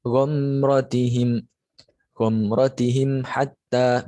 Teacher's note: Jadi membacanya sama, membacanya dengan jelas, mim sukunnya tidak masuk ke dalam ro dan mimnya tetap dibaca jelas dan roknya juga tetap dibaca jelas. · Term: idhar syafawi